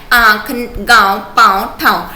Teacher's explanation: इन स्वरों का उच्चारण नाक और मुख से होता है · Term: अनुनासिक